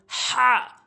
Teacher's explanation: হা হলকের মাঝখান থেকে হলকের মাঝখান থেকে